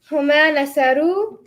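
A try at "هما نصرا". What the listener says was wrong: Huma is not nasaru. Huma rhymes with the word that you say after it. Huma nasara.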